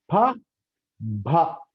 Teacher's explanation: బైలేబేల్ దగ్గర అంటే రెండు పెదాల దగ్గర గాలి ఆపేస్తున్నాం